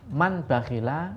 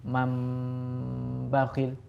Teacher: Yaitu apabila ada nun sukun atau tanwin bertemu dengan huruf ba. Cara baca berdengung, kemudian suara nun sukun atau tanwin berganti menjadi mim sukun. · Suara nun sukun diganti dengan suara mim sukun. Man bakhila menjadi mam bakhil. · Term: iqlab